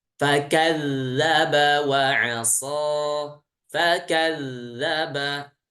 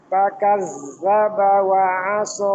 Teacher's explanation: Dibaca huruf dzal itu dengan mengalirkan suara tanpa udara. Ya, jadi udaranya ditahan karena emang dia bukan hams ya, tapi jahar.